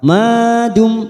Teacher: mim sukun bertemu tak idhar safawi kita baca jelas tanpa mendengung